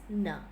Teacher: then like this it goes there and just like in duda there's a tip and blade with the tongue in complete contact with alveolar ridge